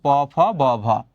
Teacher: মনে রাখবা ওষ্ঠ স্পৃষ্ট ব্যঞ্জন হচ্ছে প ফ ব ভ